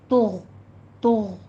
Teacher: غین کو ادنی حلق سے ادا کرنا ہے اور قلقلہ نہیں کرنا اس کے اوپر